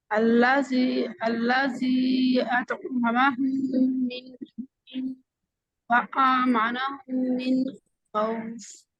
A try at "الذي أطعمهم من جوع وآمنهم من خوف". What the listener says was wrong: اچھا، اس میں الذی کا جو ذال ہے، الذی، اس کا مخرج آپ نے ٹھیک نہیں کیا، اس پہ اس سے تھوڑی سی ذا کی آواز آئی ہے، ٹھیک ہے؟